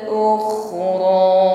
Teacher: Ada gesekan di dinding tenggorokan, dia tergolong isti'la, tebalkan bunyi hurufnya.